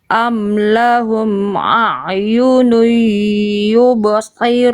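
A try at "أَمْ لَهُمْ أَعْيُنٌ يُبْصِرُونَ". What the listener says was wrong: Nah, runya kepanjangan ya. Runya nggak ada alis. nggak ada alis cukup 2 harokat aja.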